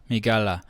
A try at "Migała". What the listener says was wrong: Migała. Migała. Not la.